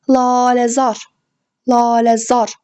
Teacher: A burda uzanır dostlar. A uzanır. Vurğu isə sonuncu üzərinə düşür. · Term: sait uzanması